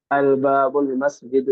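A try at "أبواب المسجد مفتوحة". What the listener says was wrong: وہاں پر لام آپ کو نظر آ رہا ہے؟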